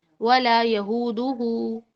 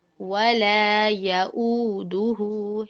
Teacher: इसके अलावा हम एक और गलती करते हैं, बहुत कॉमन है ये गलती, ऊपर वाली गलती से भी ज्यादा कॉमन है, वो है वला यऊदू में, वो वला यहूदू पढ़ते हैं, वला यहूदू हु, ठीक है, ये हा नहीं है, ये हमजा है, वला यऊ और लंबा वाला है